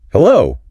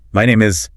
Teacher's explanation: the pitch goes up on hello, stays steady on the name, and warms up at the end